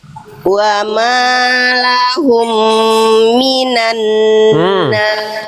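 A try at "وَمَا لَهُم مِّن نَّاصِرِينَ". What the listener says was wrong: Nggak ada minan Bunda, minna.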